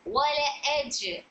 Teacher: یہاں پر جیم میں قلقلہ صغرا، ویک قلقلہ ہو رہا ہے